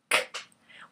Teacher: When I say k, the tongue is blocking it, and then it's partially blocking it because it's releasing and it's dropping down.